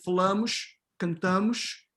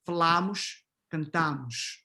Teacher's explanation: but in the preterite, it's the open a, right? Falamos, cantamos, okay?